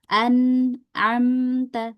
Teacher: Kemudian kalau naqisah dia lebih sedikit lagi gunahnya karena dia izhar atau jelas ya. Jadi cuman numpang lewat aja ghunahnya.